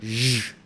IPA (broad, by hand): ʒ